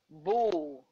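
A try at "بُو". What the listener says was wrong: Stretch the voice of wow. Stretch wow.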